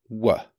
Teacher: For /w/, the lips don't close the air passage completely – the air passage is somewhat restricted, but still open. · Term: approximants